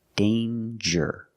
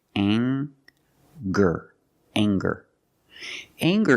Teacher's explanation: we have the nasal sound plus the hard G the G sound together